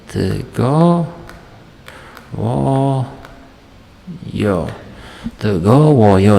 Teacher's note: Shu yerda endi ikkita t kelayapti, e'tibor bergan bo'lsanglar, mana bu t harfimiz i kelayapti-yu, lekin qavs ichidagi i, ya'ni i deb talaffuz qilinadi. Bunisi bunisi g deb talaffuz qilinadi. Bu k emas, sababi bu k ikkita unlining o'rtasida kelayapti.